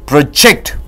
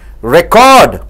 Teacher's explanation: when you stress on the second syllable, ject, it becomes a verb